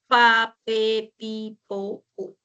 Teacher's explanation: El modo oclusivo se refiere cuando tú articulas un sonido, hay una obstrucción total, o sea, un cierre total en una parte de la cavidad bucal y luego se expulsa el aire con fuerza · A ver, por ejemplo, cuando hacemos el sonido de la P, nosotros juntamos los labios, bien, juntamos los labios, retenemos el aire y luego explota